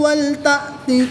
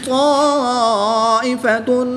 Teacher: تا اور طا کی ادائیگی میں فرق کریں گے. تا کو باریک اور طا حروف مستعلیہ میں سے ہے تو اس کو پر یعنی موٹا پڑھیں گے